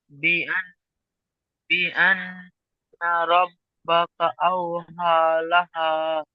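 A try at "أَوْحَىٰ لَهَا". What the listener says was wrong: হুম বুঝে এসছে কথা কেমন টান হচ্ছে? হা খাড়া জবর একালিপ টান হবে, এটা ইয়া পড়তে হয় না। এখানে যে হা আছে আর উপরে খাড়া জবর আছে, খাড়া জবরকে পড়তে হয়, খাড়া জবরকে।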